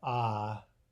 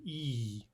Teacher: Notice where your tongue is, ah, near the back, and then e, where it moves forward.